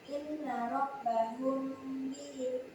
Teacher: menyuarakan nafal dengan samar-samar di antara kedua bibir sambil didengungkan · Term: Ikhfa Syafawi